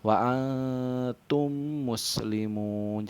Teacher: Jadi suara mim sukunnya tuh sedikit rangkap ya, tadi masuk seperti tasdidkan ke huruf mim hidupnya. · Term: idgham mimi